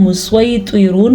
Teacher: ہا کے تلفظ کا خاص خیال رکھنا ہے، جو یہاں پہ آپ کو نظر آ رہا ہے اس کو ہم مسیطرون پڑھیں گے. یہاں پہ کچھ سین کی سواد کی آواز سیٹی جیسی آئے گی، یعنی کہ سین کی جیسے آتی ہے، تو اس میں کوئی غلط نہیں ہے، آ سکتی ہے. · یا ساکن سے پہلے زبر ہے تو یہ یا لین کہلائے گا، اس کو ہم لمبا نہیں کریں گے